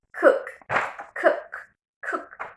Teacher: There's no vibration on our vocal cords. No hay vibración aquí en nuestras cuerdas vocales. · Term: voiceless